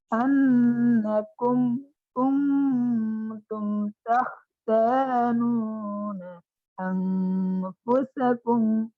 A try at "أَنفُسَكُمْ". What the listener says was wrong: সিন কে আলোচ্য করুন আনফুসাকুম ফুসা ফুসা এরকম হচ্ছে সিনের উচ্চারণ হচ্ছে না ফুসা ফুসা সা কুম